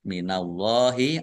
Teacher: Allahnya dibaca tebal karena harokat di depannya fathah. Lam fathah berdiri mat tobi'i, qalu to fathah alif mat tobi'i panjang dua harokat.